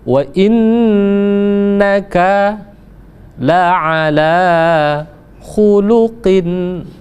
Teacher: Wa innaka la ala khuluqin kembali lagi kita bertemu dengan huruf izhar, maka dia dibaca jelas. Wa inna pertama digunnahkan, ditekan selama 2 harokat